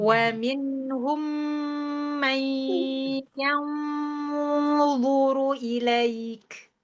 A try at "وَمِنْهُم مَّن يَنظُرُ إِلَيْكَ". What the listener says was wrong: Iya, ilaiknya kurang panjang.